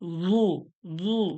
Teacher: মোটা করে, গোল করে, মোটা করে, জিহ্বার আগাটা উপরের দাঁতের গোড়ায় কাছে লেগে থাকবে